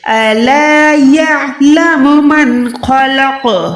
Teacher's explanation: پر آپ نے آواز کو لوٹانا ہے، خلق نہیں ہے، خلق، قوف کو لوٹائیں، پروپر لرزش دیں آواز میں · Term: حروف قلقلہ